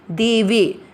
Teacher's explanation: दोनों अक्षर जो है वो दीर्घ वाले हैं, तो आपको इनको थोड़ा सा ह्रस्व से अधिक समय देना है